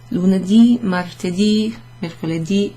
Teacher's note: you just put a stress emphasis on that last syllable